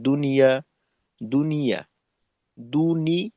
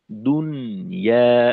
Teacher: নুনের জজমটা স্পষ্ট না হয়ে আংশিক জেরের উচ্চারণ হয়ে যায় বা অনেক সময় দেখা যায় যে পূর্ণ জেরের উচ্চারণটাই বুঝে আসে। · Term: লাহানে জলি